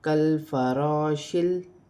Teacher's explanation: لام کو کاف کے ساتھ ملا کر پڑھا جائے گا، لام ساکن ہے اور یہاں پر الف سے پہلے زبر آ رہی ہے تو الف مدہ بنے گی، اور یہاں شین کو لام کے ساتھ ملا کر پڑھا جائے گا